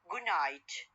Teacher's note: D sound will be changed into nasal sound. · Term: assimilation